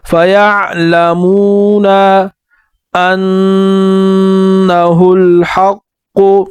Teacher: نون پر غنہ کریں گے، قاف کو واضح کر کے اور موٹا پڑھیں گے